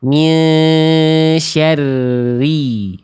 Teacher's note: Pangkal lidahnya enggak naik dia tipis. Enggak syari syari apalagi syarri enggak enggak pakai monyong ya. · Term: ro kasrah